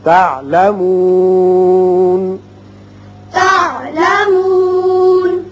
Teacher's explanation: ثم كلا سوف تعلمون ثم كلا سوف تعلمون تعلمون تو وصل کی صورت میں ہوگا. جب وقت کریں گے اور ہے بھی علامت وقت مطلق کی، نون ساکن پڑھیں گے.